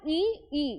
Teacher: ई बोलने में हमारा जो तालु है वो प्रयोग में लाया जा रहा है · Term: तालव्य